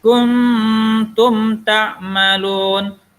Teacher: Sebelumnya ikhfa, setelah itu izhar. Dengung, kemudian jelas.